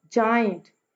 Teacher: पहले वाला syllable stress है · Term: ट्रॉकी मीटर